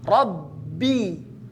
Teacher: bi pada rabbi di sini jangan sampai masuk ke hidung